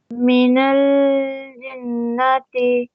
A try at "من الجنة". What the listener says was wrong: Don't pause here. من الجنة. Don't say من ال. Don't pause on lam. من الجنة.